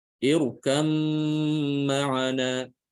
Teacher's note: idgham kamil, yaitu sempurna, tapi disertai dengan gunnah. Disertai dengan dengung, suara dengung. Jadi didengungkan, ditahan ya.